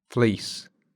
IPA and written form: fliːs (fleece)